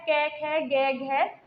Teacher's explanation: क वर्ग का जो उच्चारण स्थान होता है क वर्ग का उच्चारण स्थान हमारा कंठ होता है कंठ से हमारी ध्वनि निकलेगी किसके लिए क वर्ग के लिए